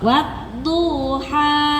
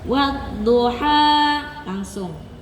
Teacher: Yang betul dunya enggak ada jarak begitu.